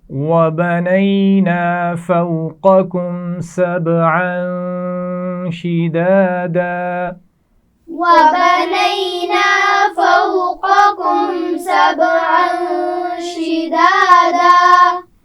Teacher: فَوْقَكُمْ یہاں پر واولین ہے اور قاف سبز رنگ میں دیا گیا ہے، اس کو کیسے پڑھیں گے؟ موٹا.